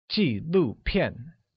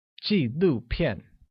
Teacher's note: with falling tones on all I, U, and A